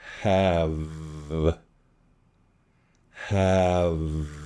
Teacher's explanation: Really get that buzz in your throat.